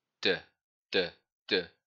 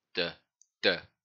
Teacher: D, as in dog, and it's the exact same of how T is made. The sound is produced by the tongue touching the back of the teeth.